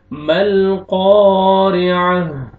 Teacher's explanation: क़ाफ को मोटा करना है और आपने खींचना है, अलिफ मद है